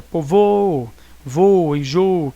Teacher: Você vai dispensar, que prescinde-se de acento circunflexo, ou seja, dispensa-se, né, nos substantivos e nas formas verbais paroxítonas que contém o O tônico oral fechado de um hiato, né, em primeira pessoa do singular do presente do indicativo.